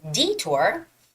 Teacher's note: detour has a stress on the first e